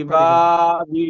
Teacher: ডান দিকে ইয়া সাকিরের ডান দিকে জের এসেছে, ইয়াকে ইয়া মাদ্দা বলে, ইয়া মাদ্দাকে এক আলিফ পরিমাণ টান দিয়ে পড়তে হয়।